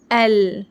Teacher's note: یہاں لام کو پڑھتے وقت ہمارے زبان کی نوک اوپر تالو سے اوپر کے دانتوں کے مسوڑوں کو لگ رہی ہے، ایل، اس طرح۔